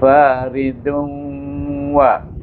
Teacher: Iaitu dengan dua harakah, dengan idgham ma'al gunnah, iaitu dengan dengung.